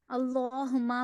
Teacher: اللہما میں اللہ کو پر پڑھنا ہے، ہما میں میم پہ شد کرنا ہے، شد ہے یہاں پہ تو غنہ کرنا ہے